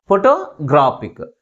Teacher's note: third syllable మిగిలిన syllables కంటే ఎక్కువ ఫోర్స్గా పలుకుతుంది